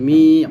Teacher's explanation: মিম ইয়াজের মি, জেরের পরে second এক লিফ টান হবে